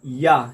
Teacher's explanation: जब हम या बोलते हैं तो फिर ओंठ जो है ना उनका यूज नहीं होता है